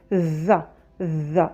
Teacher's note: Les deux mâchoires comme si on morde la langue, le bout de la langue, et on sort la lettre avec du bruit.